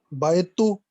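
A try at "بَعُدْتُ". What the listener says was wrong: बाउत्तु, बाउत्तु ऐन कलमे में पेश आएगा. बाउत्तु, बाउत्तु.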